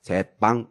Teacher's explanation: 새와 방이 합쳐지면서 된 소리가 만들어졌으니까 사이소리 집어넣었죠.